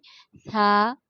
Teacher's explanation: اوپر اور نیچے والے دانتوں کے درمیان زبان ٹچ کرتے ہوئے پیچھے ہٹ جاتی ہے، اور ایک الف اس کے آگے لگتا ہے، شہادت فنگر بند کر کے جتنی دیر کھلتی تھا، بالکل توتلا سا پڑھنا ہے۔